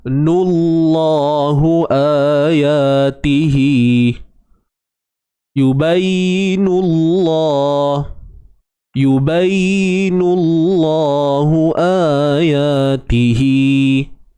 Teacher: Kalimah Allah, lam pada kalimah Allah ni kita kena baca dengan tebal. Sebab apa? Sebab sebelumnya ada ni, huruf yang berbaris hadapan.